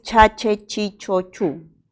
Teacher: es chachi chichu este es un sonido áfrica do y estatal porque la lengua se va a la zona del paladar y es sordo porque no presenta vibración de las cuerdas vocales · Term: sonido africado